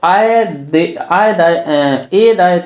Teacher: ए और आय इनका उच्चारण स्थान कंठ और तालू होता है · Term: कंठ तालू